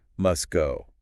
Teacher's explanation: >> The tease is gone. the T just vanishes because it's awkward to say a hard T right before a hard G. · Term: Elision, elision